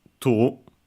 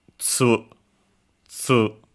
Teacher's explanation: This is particular because it's affricate, even though the following vowel is u. It's an exception, and it's like that.